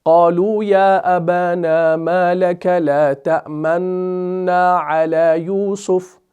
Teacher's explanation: صرف ہونٹوں کو گول کرنا ہے، پیش کو ادا نہیں کرنا، کیونکہ یہاں پر آپ کو کوئی بھی پیش نظر نہیں آ رہا ہے۔ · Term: اشمام